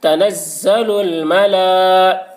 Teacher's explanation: کھڑا زبر کو ایک الف کے برابر کھینچ کر پڑھیں گے